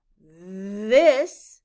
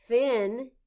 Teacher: when you say this you can feel your throat vibrate when you say the quieter thin your throat does not vibrate